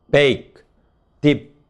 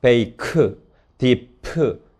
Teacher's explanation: bake, dip 이런 식으로 파열을 안 합니다. 하지만 어떤 화자는 이러한 단어들을 릴리스트, 파열된 파이널 스탑으로 발음할 수가 있다.